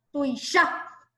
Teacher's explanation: Tuisha. ¿Dónde se acentúa? En la última A.